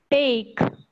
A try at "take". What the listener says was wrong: The sound T must be taken care of. This one is not T. It's take.